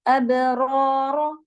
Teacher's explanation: ابرار با پہ قلقلہ اور دونوں را ہیوی، لیکن ایک پہ مدہ ایک پہ حرکت.